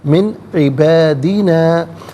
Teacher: من میں نون ساکن ہے، اس کے بعد عین حرف حلقی ہے تو نون ساکن کو یہاں اظہار کے ساتھ پڑھا جائے گا، غنہ یا اخفا نہیں کیا جائے گا